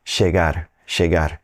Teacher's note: if you work your way down through South America and you end up down in Argentina, Uruguay, that double L may sound like a sh